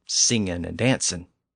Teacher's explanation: Even though it's not considered standard, many speakers still drop the G at the end.